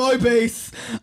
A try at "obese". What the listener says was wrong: I like how you lean on the O of obese. I've never heard it pronounced that way. Obese. Obese. No, it's obese. No, it's not obese. No, it's not obese, nor is it. I would say obese, but it's just the way you say it is like obese.